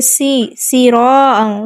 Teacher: سراعا سین پہ سیٹی واضح کریں گے